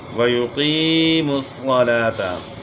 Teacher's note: قاف کو موٹا کرنا ہے اور یا مدہ ہے، تھوڑا کھینچنا ہے اس کو